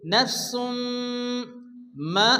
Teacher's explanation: তানবিনের পরে ইউমিনের মিম আসছে, ইদগামে বা গুন্না বা ইদগামে মিম এক আলিফ গুন্না করে পড়তে হবে। নাফসুম মা, আলিফ মাদ্দা এক আলিফ টেনে পড়তে হবে।